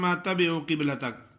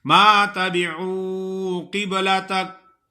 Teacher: عین کو اپنے مخرج سے نکالنا ہے، اور آگے وہ مدہ ہے تو تھوڑا سا کھینچنا ہے ایک الف کے برابر